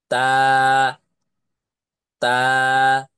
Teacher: তা অক্ষরটি তা অক্ষরটি কোথা থেকে উচ্চারণ হয় লক্ষ্য করে দেখেন তা অক্ষরটি উচ্চারণ হচ্ছে জিহবার আগা সামনের ওপরের দুই দাঁতের গোড়ার সাথে লাগাইয়া উচ্চারণ হয়